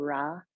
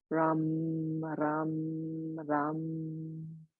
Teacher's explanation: it's not a hard R like we say Ra, but the tongue actually comes to the tip of the mouth. So it's Ram, Ram, Ram.